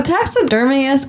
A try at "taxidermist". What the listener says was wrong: Couple extra syllables on taxidermist.